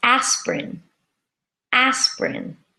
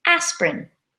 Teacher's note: spelling it looks like as per in with three syllables but we say aspirin with two syllables so we squish that word together with a silent I